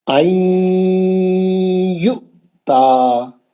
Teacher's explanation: عین میں نون کو لے کے یا میں گھس گیا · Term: ادغام مال غنہ